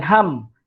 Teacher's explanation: Dia bukan ham, hang. Ham dia kena tutup mulut ni tuan-tuan, baru sampailah kesempurnaan sebutan huruf mim tu. Kalau tak tutup mulut ni, dia jadi hang. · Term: mim mati